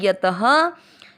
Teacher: त में अ की मात्रा तो विसर्ग को ह पढ़ेंगे